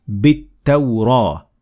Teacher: I dropped Hamzat Wasl and the lam